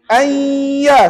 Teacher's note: Tapi bila jadi idgham ma'al ghunnah, an tadi sudah tidak berbunyi. Dia terus jadi ayya.